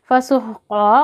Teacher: क़ाफ़ को देखिए मोटा पढ़ेंगे, ये मोटे पढ़े जाने वाले हर्फ में से है।